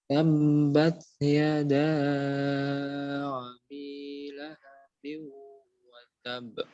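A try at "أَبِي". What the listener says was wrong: Baik, sekarang sudah betul tabnya, tapi ada sedikit lagi. Abinya, abi itu a-nya biasa saja. Huruf a, i, u. Jangan a-i, ya. Abi lahabin wa tab.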